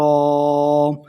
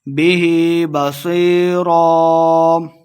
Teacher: سواد کو موٹا پڑھیں گے، یا مدہ دو حرکات لمبا بھی کرنا ہے اور ایک زبر کے ساتھ ہم نے وقف کر کے پڑھنا ہے.